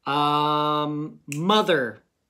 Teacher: That O kind of makes a short U sound.